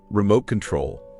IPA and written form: rɪˈmoʊt kənˈtroʊl (Remote control)